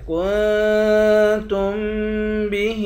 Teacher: کاف کو نون کے ساتھ ملا کر نون پر اخفا کریں گے، تا کو میم سے ملا کر میم پر غنہ کریں گے۔